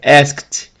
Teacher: Nesse caso, o ask está no passado, ele é um verbo regular e a pronúncia do ED é de T, né? Ask, como terminar com K, que é não vozeado, fica asked